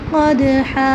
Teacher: قاف کے اوپر 2 نقطے ہیں، قاف کو گلے کے وسط میں پڑھیں گے